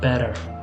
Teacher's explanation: But when you have a T between two vowels, it sounds kind of like a Spanish R, or even like a D. It's like a flap up top, you tap the tongue, kind of that.